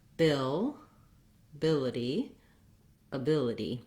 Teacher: the bill is where the main length the clear vowel is in this word